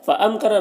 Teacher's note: قاف حروف مستعلیہ میں سے پر پڑھیں گے، با میں قلقلہ ہو رہا ہے۔ فَأَمْكَرَ میم میں اظہار شفوی ہو رہا ہے تو اسے جلد پڑھنا۔ منہم نون میں یہاں پر اظہار حقیقی ہو رہا ہے، اسے جلد پڑھنا ہے، تو اس طرح سے پڑھیں گے۔